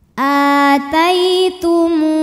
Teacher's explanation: dibaca panjang a-nya ini dua harakat Aai tai ada harffulin sebab ada Ya Sukun didahului baris fathah maka dibacanya lembut